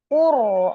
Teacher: Jam'ahu wa qurana qur ro sukun sebelumnya domah. Jadi rnya dibaca dengan tebal atau takhim